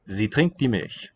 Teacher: You spell this one with an S, but it's a voiced Z sound.